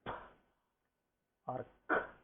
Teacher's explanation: Like when you say p or k, these sounds you should not allow the vocal cords to vibrate. You should not say ka, no, you should say k. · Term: voiceless sound